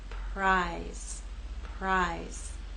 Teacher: R will begin without vibration, and then you'll add your voice as we move into I.